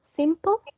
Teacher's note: too lazy to be even noticed so this you are correct the stress is on the first syllable